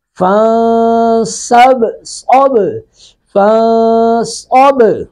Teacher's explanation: را کو پر کریں گے، با ساکن پہ قلقلہ کریں گے